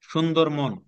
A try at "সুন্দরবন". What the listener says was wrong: মন না, সুন্দরবন।